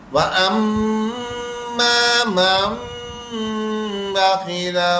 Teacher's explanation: پڑھتے وقت نون کی آواز نہیں نکالیں گے, میم کی نکالیں گے